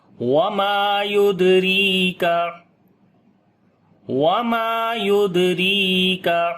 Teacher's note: میم کو لمبا کریں گے، الف مدہ ہے